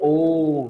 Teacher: उसके उच्चारण में तीन मात्रा काल से ज्यादा का समय लाएगा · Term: पुलत